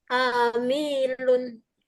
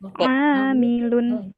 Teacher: Oh, ainnya panjang, amilun mimnya pendek, amilun.